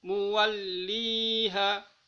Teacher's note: di sini ada panjang harokat, masuk di kategori mad tabi'i karena kasro bertemu dengan huruf ya. Panjangnya 2 harokat.